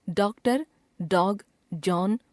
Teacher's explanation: यह चिन्ह आ तथा औ के बीच की ध्वनि सूचित करता है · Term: अर्धचंद्र